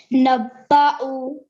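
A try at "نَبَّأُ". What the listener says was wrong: Okay, so why did you say, why did you join the noon to the ba? Is there a shadda there?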